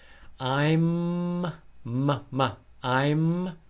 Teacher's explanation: the lips need to be touching and they need to vibrate